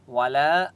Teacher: اب یہاں پر آپ دیکھیں لام لکھا ہوا ہے، یہاں پر وقف نہیں کرتے. والا الف مدہ ہے، لام کو ایک الف کی مقدار کھینچ کر پڑھیں گے